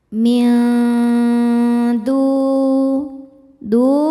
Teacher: Sebab ada wau sukun sebelumnya baris dah. Cara membacanya huruf dal dipanjangkan dua harakat. · nun dibunyikan samar-samar menuju huruf dal disertai bunyi dengung. Dengungnya sedikit ya. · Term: mad thobi'i zohiri, ikhfa hakiki aqrab